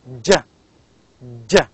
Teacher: You can feel the sound d before j. It's j, jeep.